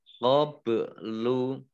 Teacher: ba sukun bacaan qalqalah ya dibaca memantul